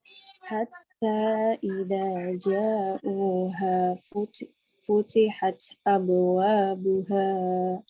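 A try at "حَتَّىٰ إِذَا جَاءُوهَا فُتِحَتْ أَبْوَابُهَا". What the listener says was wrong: Nah, itu di ja-nya panjang, yaitu karena mad wajib mutasil panjangnya sampai 6 harokat. Hatta idza ja'uha futihat abwabuha.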